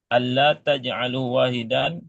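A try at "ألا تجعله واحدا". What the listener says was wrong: Ay, Allah taj'alu. Iya, bukan Allah, tapi ala gitu. Jangan ditasdid. ditasdid nanti ada annya. Ini nggak ada tasdidnya. Jadi ala taj'aluhu wahidan.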